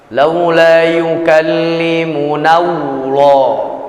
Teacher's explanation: jangan berikan wau masuk menyusup ke dalam lafaz lafzul jalalah